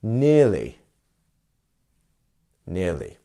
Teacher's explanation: we have our first syllable which is the stress syllable